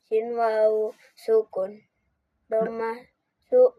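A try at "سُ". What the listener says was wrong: Panjangin su.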